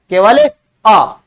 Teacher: अपन आ का उच्चारण करते हैं तो इसमें मुख पूरा खुला रहता है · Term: विवृत स्वर